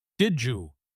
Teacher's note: Did ends with a D, and you starts with a Y. They crash into each other to make a J sound.